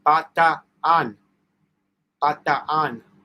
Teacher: there are two vowels next to each other. You say them both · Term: say both A's